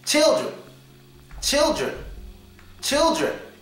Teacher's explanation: The schwa sound is on the last E, but the N is pronounced here.